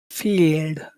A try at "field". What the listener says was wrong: field. You've got to make your mouth more tense when you say that. You have to put tension in your mouth. field. It's like your tongue is. You pull your tongue back like it's a snake about to attack. Field.